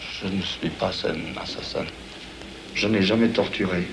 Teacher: avec cette voix, vous savez, très, très gutturale, très germanique